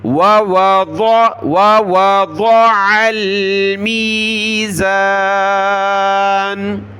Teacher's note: اس کو ضاد پڑھنا ہے، بہت سارے دال پڑھ لیتے ہیں، تو میں نے بہت سی مرتبہ سمجھایا کہ صرف دال نہ پڑھیں، وَوَضَعَ تو دال پڑھ لیں گے، یہاں دال نہیں ہے، یہ ضاد موٹا کر کے پڑھنا ہے، ضاد. وَوَضَعَ الْمِيزَانَ.